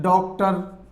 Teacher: ये आ plus ओ के मध्य की ध्वनि है, यानी कि इन दोनों वर्णों के योग से आ का निर्माण होता है। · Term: अंग्रेजी से आगत स्वर